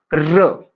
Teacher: जिन व्यंजन के उच्चारण में जीभ लुढ़कती या प्रकंपन करती है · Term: लुंठित यानी प्रकंपित व्यंजन